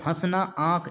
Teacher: इनमें सब में क्या होता है नाक से हवा निकल रही है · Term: अनुनासिक